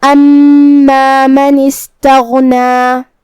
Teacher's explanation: غین کی ادائیگی حلق کے اوپر والے حصے سے ہے، جو کہ اس پہ جزم ہے تو ہمیں حرف الغین کو ظاہر کرنا ہے، آخر میں مد طبیعی کا دھیان رہے۔